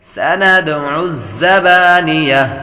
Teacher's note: زا حروف صفیریہ میں سے ہے یعنی سیٹی کی آواز آئے گی